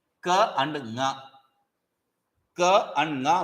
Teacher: though ka and nga are pronounced from throat, that there is a homogeneity, but nga is pronounced along with the nose. It's a nasalized kakara.